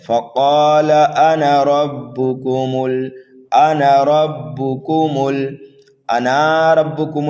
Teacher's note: اس انا کے نون کے بعد جو الف آتا ہے یہ الف زائد ہوتا ہے، اس کو کھینچنا نہیں ہے، جلدی پڑھنا ہے متحرک حرف کی طرح۔